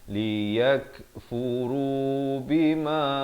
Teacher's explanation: Liyakfuru, yak, kaf ada bunyi angin itu